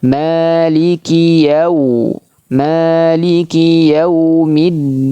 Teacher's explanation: Jangan sampai dipanjangkan ya-nya. Nanti masuk ke kategori kesalahan, yaitu yang diistilahkan oleh para ulama tamtid, memanjangkan huruf. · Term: huruf lin